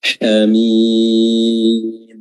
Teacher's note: Huruf ha wasatul halq, tenggorokan tengah, jadi perkecil sehingga menimbulkan suara yang tajam.